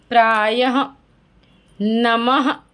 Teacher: तो हा की तरीके से उच्चारण होता है, लेकिन हा नहीं होता है, वो क्या होता है? विसर्ग होता है।